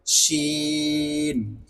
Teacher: এটাও ঠিক তেমনই ভাবে হবে জিমের মতন। জিহ্বার মধ্যখান একটু বাঙ্গা খেয়ে উপরে তালুর সঙ্গে লেগে যাবে,